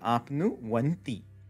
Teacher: when we have our u before anti, instead of the u changing into a va like we see elsewhere, the semi-vowel va is now going to get inserted in between